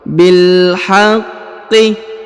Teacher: Huruf bi langsung disambung ke huruf lam yang berharokat sukun.